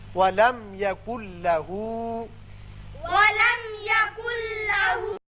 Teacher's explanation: آپ نے نون ساکن تنوین کا جو قاعدہ پڑھا ہے ادغام کا، اس میں تھے 6 حروف یرملون، لیکن ان میں 2 تھے ایسے جہاں کی ادغام بغیر غنہ ہوتا ہے، وہ تھے لام اور را. نون ساکن کے بعد جب لام آ جائے تو وہاں ادغام تو ہوتا ہے لیکن غنہ نہیں ہوتا. اب نون نہیں پڑھا جائے گا، کاف کی آواز لام سے سیدھی ملے گی. یکن لہو پڑے گی.